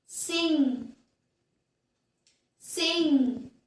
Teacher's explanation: we're going to hold the contact and let the air flow through the nose